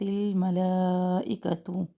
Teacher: ملائکۃ میں مد متصل ہے اور اس کو طول کے ساتھ پڑھنا ہے